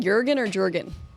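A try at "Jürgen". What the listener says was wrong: The J is silent. Ergonomics.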